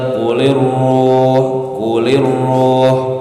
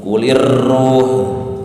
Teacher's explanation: hanya saja ketika ada tasid, getaran ra tersebut harus dikaburkan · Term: redam getarannya